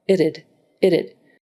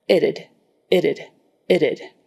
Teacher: So really it's more like itided it. Tongue bounces a little bit to stop and then start the next sound. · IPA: /ɪtəd/